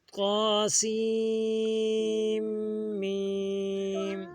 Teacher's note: میم پہ ہم نے غنہ بھی کرنا ہے اور مد بھی کرنا ہے